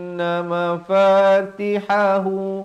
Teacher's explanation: Ha ini di Pangkal kerongkong · ha ni di pertengahan kerongkong